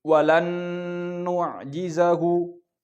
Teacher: rumusnya dia suara dari satu makhraj berarti hidung 100%